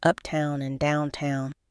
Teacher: the T in town was almost swallowed sounding more like a quick D